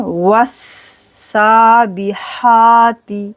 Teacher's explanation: واو کو سین کے ساتھ ملائیں گے، یہ باریک سین ہے